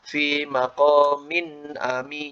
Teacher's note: Jadi dialirkan gunnahnya, suara n itu. Ya, kalau dipangkas malah aneh, maka malah kita tidak memberikan hak huruf ya.